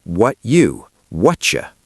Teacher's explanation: The T in what hits the U in you. When a T and a U kiss, they make a ch sound. T plus U equals CH.